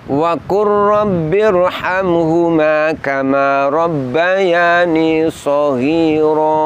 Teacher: lamnya kemudian diidgamkan ke huruf Ro Apa sebab karena lam dengan ro makhrajnya berdekatan kita lihat mereka sama-sama ada di ujung lidah untuk ee ro · Wa qur rabbi tertulis wa qul rabbi, namun lamnya kemudian diidghamkan ke huruf ro. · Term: Idham mutaqoribain, idgham mutaqaribain